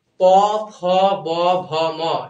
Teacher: প, ফ, ব, ভ, ম, এগুলো হচ্ছে দুটো ঠোঁট একখানে লাগতেছে, এই জন্য এটা ওষ্ঠবর্ণ।